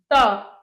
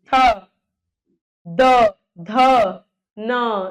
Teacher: दंत, दांत। देखो त, आपकी टंग, आपकी जीभ जो है दांत पे जा रही है। थ, द, ध, न, दंत्य।